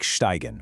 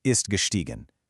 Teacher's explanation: You take steigen, which means to climb. That I sound flips to E, so you get ist gestiegen.